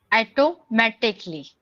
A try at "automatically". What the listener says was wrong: A नहीं. O. O से औरत. You know, in Hindi, what we say? Auto.